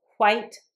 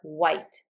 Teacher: pronounce it with a lot of air, and that's fine. You can also pronounce it with just the W sound. White. So, white or white, it's the same.